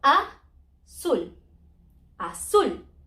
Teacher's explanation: That word ends in a letter different to N, S, or vowel. So the stress is at the end.